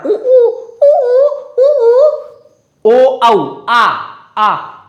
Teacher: पीछे से निकल रहे हैं, जीभ की वजह से एकदम कंठ तक पहुंच जाती है बात। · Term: पश्च